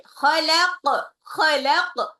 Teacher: Khalaq, khalaq, qafnya dipantulin lagi. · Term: qalqalah